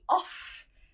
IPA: ɒf